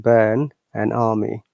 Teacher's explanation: So, what do you pronounce instead of R? We pronounce vowel sound instead of R.